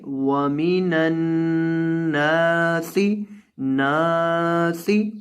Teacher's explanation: نون کو لمبا کرنا ہے آپ نے، کیونکہ نون کے بعد الف ہے، اور سین میں آپ نے سیٹی پیدا کرنی ہے۔